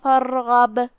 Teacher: پھر یہاں غین ہے، غین بھی حروف التفخیم میں سے، لہذا ہم را کو اور غین کو دونوں بھاری آواز میں پڑھیں گے · را کا حکم ہے تفخیم، کیونکہ اس سے پہلے والے حرف پہ مطلب فا پہ زبر ہے